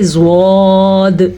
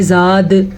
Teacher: अगर आपको समझना है कि पुर करने का क्या मतलब है तो इनको मुंह भर के पढ़ना है या कह लें मोटा करके पढ़ना है। जब मुंह को गोल करें तो लफ्ज़ खुद ब खुद ही पुर हो जाता है, इसीलिए इसको कहते हैं मुंह भर के पढ़ना, मुंह को गोल करके पढ़ना।